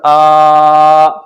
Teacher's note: کھڑا زبر الف مدہ کے برابر کھچے گا